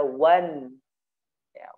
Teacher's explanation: dimasukkan ke hidung ya, selain dia makhrajnya ditaruh di gusi, kemudian di hidung. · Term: gunnah